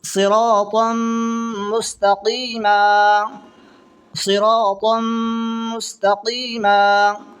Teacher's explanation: من اللہ صراطا مستقیما، صراطا مستقیما، دو زبر کی تنوین ہے، دو زبر کی تنوین کے بعد میں میم آ رہا ہے، تو ادغام مال گنہ ہوگا اور گنہ کے ساتھ پڑھیں گے